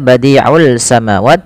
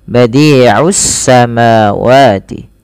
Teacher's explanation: idghamkan saja ke huruf sin sehingga sinnya berharakat tasydid.